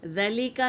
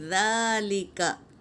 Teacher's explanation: اخلاب، change کرنا، نون کی آواز کو میم سے بدل کر پڑھنا۔ اور ذال پر کھڑا زبر ہے، ایک الف کی مقدار کھینچیں گے